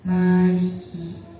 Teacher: mad alif didahului dengan huruf mim yang berharakat fathah, maka cara bacanya panjang. Panjangnya 1 alif atau 2 harakat